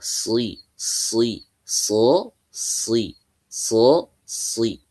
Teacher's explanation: huruf shad ketika kasrah tetap dibaca tebal ya tetap dibaca tebal karena huruf shad ini punya sifat itbaq